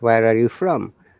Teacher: when you're saying where are you from you're stressing on from